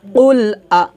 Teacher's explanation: আমরা হলকের শুরু থেকে হামজা জবর আটা উচ্চারণ করব